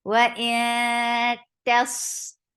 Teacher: Ta is very sharp, but sad is heavy. It has rakhawa. It has safid.